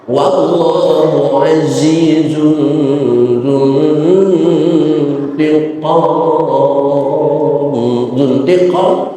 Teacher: ada nun mati ketemu huruf ta, hukumnya juga sama ikhfa, namun ikhfanya ikhfa aqrab sehingga suaranya suara n, bukan ang tapi n.